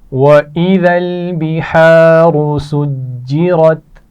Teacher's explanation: بحار را موٹی پڑھی جائے گی، سجرت اس میں بھی را موٹی پڑھی جائے گی